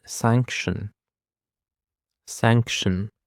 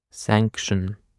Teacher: The stress actually is on this first syllable sanction